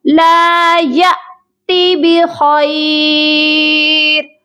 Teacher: حمزہ ساکن کو جھٹکا دے کر پڑھا جاتا ہے